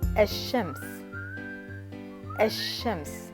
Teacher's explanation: the consonant after the glottal stop and vowel is doubled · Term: L al-Shamsiyya